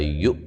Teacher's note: حمزہ کو جھٹکے سے ادا کریں گے